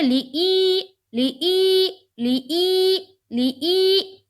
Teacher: یا مدہ کو ہم کس طرح پڑھتے ہیں؟ ایک الف کے بقدر کھینچ کے پڑھتے ہیں